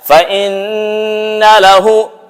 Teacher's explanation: Di mana lewatnya bacaan ini? Lewatnya di pangkal hidung. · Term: ghunnatul musyaddadah